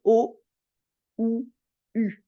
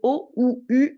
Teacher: le U est vraiment devant le ou est un peu plus au milieu et le O est vers le fond vers la gorge